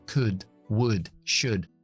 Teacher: Los 3 verbos modales que contienen L's que no se pronuncian nunca. Y la OU, en este caso, siempre es una U corta.